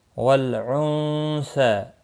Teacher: نون ساکن کے بعد حروف اخفا کا سا ہے، اخفا حقیقی ہوگا، غنہ کے ساتھ پڑھیں گے